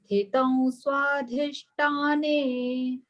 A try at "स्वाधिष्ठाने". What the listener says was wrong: Swadhisthane, th, Mahaprana.